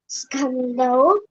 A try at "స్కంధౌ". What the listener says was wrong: ఖా లేదు, ధా ఉంది. స్కంధౌ